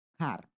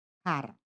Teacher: American English tends to have a more rhotic accent. Pronouncing the R sounds like car.